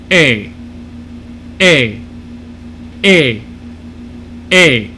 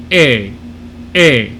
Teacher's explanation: it's a lot like a but it's going to be a little more closed and a little more forward so it's going to be a little brighter it's right in between e and ah